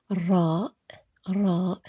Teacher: Son son est comme notre R, le R roulé, comme quand tu imites le bruit d'une voiture qui démarre.